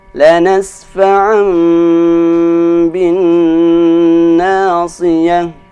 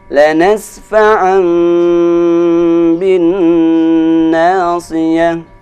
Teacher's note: dia dibaca dengan dengung dan huruf nunnya itu dibaca dengan suara mim.